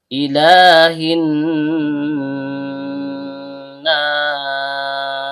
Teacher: Lamnya ujung lidah bertemu dengan langit-langit bagian depan. Karena lamnya berharokat fathah panjang atau fathah berdiri, maka dia termasuk mad tabi'i atau mad asli.